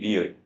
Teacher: 자, 코에서 나는 소리 니은, 미음, 이응이 있고 자, 혀의 양옆으로 흘러가는 소리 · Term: 흐름소리